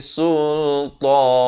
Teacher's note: Ikhfa hakiki sekali lagi. Nun mati bertemu sin. Sultan. Dan diwakafkan sekurang-kurangnya 2 harakat.